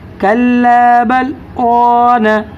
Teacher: آواز کو تھوڑی دیر پست کریں گے یعنی دھیمی کریں گے لیکن سانس نہیں توڑنا